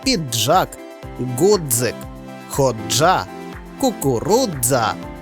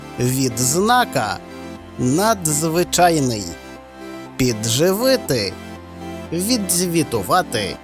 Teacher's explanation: вимагають злитої вимови тобто читаються як один звук